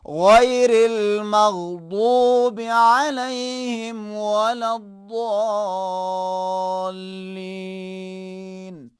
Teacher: اس کی جگہ یہ ہے کہ زبان کی سائڈ کو اوپر والے آخری 5 دانتوں سے یا اس داڑھ سے یا 5 دانتوں سے لگانے کے بعد موٹا کر کے تلفظ کریں گے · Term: حرف ضاد